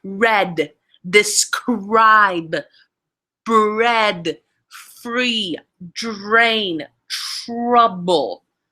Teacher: These are known as post-alveolar approximant.